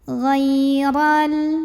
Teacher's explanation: Ra dibunyikan secara tafkhim karena roknya berbaris di atas fathah. Maka baca roknya ini adalah ditebalkan, pangkal lidah diangkat.